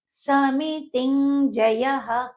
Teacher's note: ఇక్కడ సమితింజయః అనకూడదు, ఎందుకంటే ఆ సున్నా అనేది అనుస్వరము. దాని తర్వాత వచ్చేటువంటి అక్షరము జ, అంటే చ వర్గానికి చెందింది. దాని 5వ అక్షరము ఇన్యాగా పలకాలి.